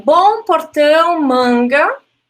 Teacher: bom portão e manga são vogais nasais